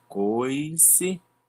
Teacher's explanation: onde o O e o I se juntam e faz um só som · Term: encontro vocálico